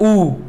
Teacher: इसमें जीभ का जो ये पश्च भाग है ये काम करता है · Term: पश्च स्वर